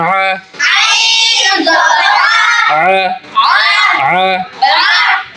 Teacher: আইনের উচ্চারণটা হবে গলার থেকে, হলকের মধ্যখান, হলকের মধ্যখান।